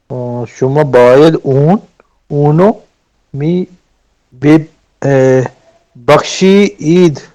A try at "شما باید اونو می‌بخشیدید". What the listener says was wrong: بخشی نہیں, بخشی دید, شی تک ایک ساتھ پڑھیں اور دال کو آگے والے سے ملائیں. اور یاد رکھیں جب می آیا تو پہلا والا بے چھوڑ دیں, جو اوپر 2 بے ہے, صرف 1 بے بولنا ہے.